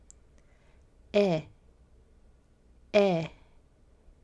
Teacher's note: for this sound your mouth isn't going to be quite as wide as a instead think of the name Seth the short e sound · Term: the short eh sound